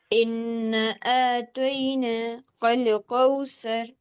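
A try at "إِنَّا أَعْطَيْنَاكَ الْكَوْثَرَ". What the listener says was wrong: देखिए इन्ना का नून को नहीं खींचा आपने, उसके बाद काफ की अदायगी सही नहीं हुई, फिर से पढ़िए।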